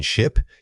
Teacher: For the short vowel like in ship, your mouth should be relaxed creating a quick clipped sound.